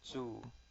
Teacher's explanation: quite a simple one here so you just have this o this u sounds like o and you put a z in front of it Zo and its first tone